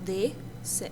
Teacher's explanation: a ponta da língua toca um pouquinho nos dentes